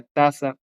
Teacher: El interdental está bien, es un sonido entre los dientes. La lengua se acerca a los dientes. Eso se parece al inglés un poquito.